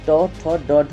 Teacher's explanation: तो जब आप ट, ठ, ड, ढ बोलते हैं दोस्तों, तो आपके जो दांत के ऊपर जो मोटा वाला मसूड़ा है उसको बोलते हैं मूर्धन्य